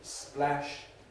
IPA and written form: splæʃ (splash)